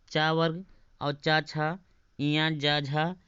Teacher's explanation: ये सब तालु से बोले जाते हैं